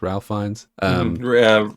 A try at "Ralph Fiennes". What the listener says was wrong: Ray Fiennes, yeah. He spells it Ralph, but it's pronounced Ray.